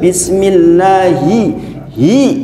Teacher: Kalau nggak ditarik pasti bunyinya he.